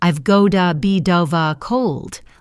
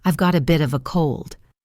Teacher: The T in bit becomes a flap T, D sound, and a V becomes ova, bidova.